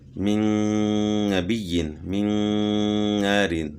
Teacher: نون ساکن کے بعد نون آ گیا تو یہاں ادغام مع الغنہ ہو گیا